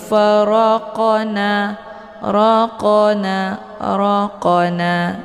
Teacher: Jadi cara bacanya qafnya dipantulkan dengan pantulan yang ringan. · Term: qalqalah sughra